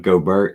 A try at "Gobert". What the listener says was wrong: Did you say Gobert? It's Gobert. Yeah, the T is silent.